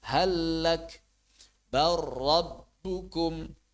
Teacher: Waifiyatu adaha dan cara mengucapkannya, cara menunaikannya adalah ayuh lami dengan cara menghapus suara huruf lam hazfan kamilan menghapus 100% bil harfi musyaddadan minhairun. Kemudian mengucapkan huruf bertasydid tanpa disertai gunnaah. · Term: idgham